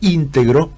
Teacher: Después de la vocal tónica tenemos 2 sílabas más que tenemos que seguir pronunciando.